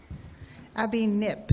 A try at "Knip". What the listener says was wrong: The K is not silent.